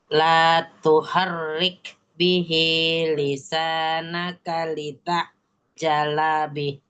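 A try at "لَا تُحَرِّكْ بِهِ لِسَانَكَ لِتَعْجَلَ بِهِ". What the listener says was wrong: Jangan dipanjangin. Jalabi. Tuharrik bi.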